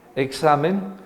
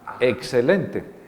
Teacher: la equis que la equis es un sonido bastante complejo porque la equis en presencia de una consonante o una vocal después puede sonar sg examen o puede sonar sk excelente